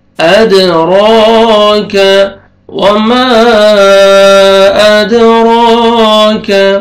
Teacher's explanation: اد، دال قلقلہ ہے، ڈبل ساؤنڈ آئے گا، را کو مر فتحہ، الف صغیرہ ہے، را کو آپ نے کھینچنا ہے، را کو موٹا بھی کریں گے، کاف کو باریک کر کے پڑھنا ہے۔ ادراک، وما ادراک، الف مدہ، الف سے پہلے فتحہ، میم کو آپ نے کھینچنا ہے۔